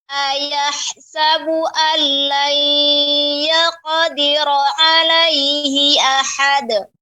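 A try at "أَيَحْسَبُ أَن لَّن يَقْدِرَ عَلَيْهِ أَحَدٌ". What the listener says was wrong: Ya, bagus.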